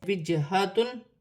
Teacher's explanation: جیم ساکن ہے، حروف قلقلہ میں سے ہے، قلقلہ کے ساتھ ادا کیا جائے گا